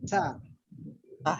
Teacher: sebenarnya bukan ta, tapi harus ada hembusannya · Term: mahmus